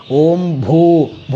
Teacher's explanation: ಭೂ ಅನ್ನೋದು ಮಹಾಪ್ರಾಣ ಇರಬೇಕು ಓಂ ಭೂ ಭೂ ಅಷ್ಟೇ ಅಲ್ಲ ಅದರ ಮುಂದೆ ವಿಸರ್ಗ ಇರೋದ್ರಿಂದ ಉಚ್ಚಾರ ಶುದ್ಧವಾಗಿ